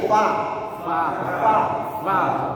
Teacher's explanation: baca tadi ini mana Inya tunjuk huruf Fa ini ya maka ujung ee e gigi seri atas ketemu bibir bawah bukan bibir ketemu bibir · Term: makhraj